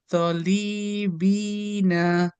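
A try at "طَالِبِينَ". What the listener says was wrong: না, আলিফ আছে।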